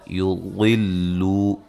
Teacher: ضاد کو خوب موٹا ادا کریں گے